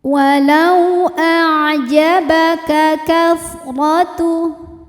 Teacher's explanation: Sebab ada waw sukun didahului harokat fathah. Cara bacanya kita lembutkan atau kita lunakan.